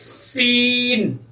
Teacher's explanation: اس کو پڑھنے میں سیٹی کی آواز پیدا ہوتی ہے